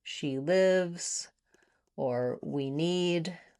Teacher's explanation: The only time that I hear an error on this e in these types of words is if you're saying something, for example, like she lives or we need. Because these short words with just letter e are usually not stressed and they're shorter in duration. Sometimes what I'll hear is you using more of the I vowel that's in it and did instead of the E vowel.